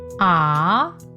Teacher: this tone requires your voice to go up like if you were going up a ladder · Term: second tone